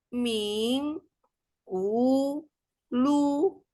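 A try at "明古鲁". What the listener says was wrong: Lu-nya 3, Bu. Mingkulu. Ya, Mingkulu ya. Lu-nya di ayun ya.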